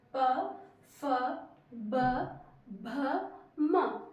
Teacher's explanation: ओष मतलब होठ से निकलने वाले होठ से निकलने वाले वर्ण होठ से उच्चारित करने वाले वर्ण प फ ब भ म तो देखिए हमारे होट टच हो रहे हैं